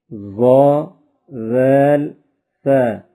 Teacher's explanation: طا دال تا زبان کی نوک اور اوپر کے دانتوں کی جڑ سے ادا ہوتے ہیں۔ ظا ذال ثا زبان کا سرہ اور اوپر کے دانتوں کے اندرونی کنارے سے ادا ہوتے ہیں۔